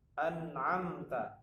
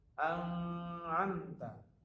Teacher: Di sini ada nun sukun bertemu dengan ain. Ain adalah termasuk huruf izhar halqi, maka cara membacanya jelas.